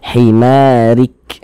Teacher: jika di bawahnya ada harakat kasrah nih maka huruf ro dibaca tipis nah tipiskan huruf rnya himarik nah begitu kemudian ini kalau kita